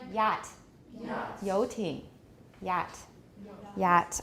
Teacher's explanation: It's the only palatal sound that we have. It's a palatal approximant.